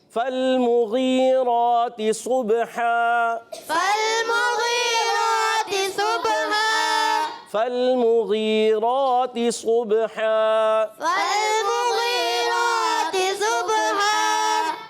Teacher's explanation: یہاں پر بھی لام کو ہلانا نہیں ہے. فالمغی غین حرف مستعلیہ میں سے ہے، موٹا ادا کریں گے اور یا ساکن سے پہلے زیر یا مدہ کھڑی حرکات کو ایک الف کھینچ کر ادا کرنے ہیں.